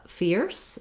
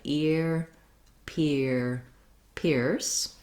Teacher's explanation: instead of the f labiodental sound with the teeth and the lips for the f sound continuing, we have the stop sound of the p, which is both lips. So again, you still have the ear sound and you just add the p.